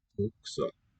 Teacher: It's not an oo, much more open. Bukser, but still with rounded lips.